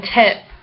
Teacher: capital I, high, front, unrounded, lax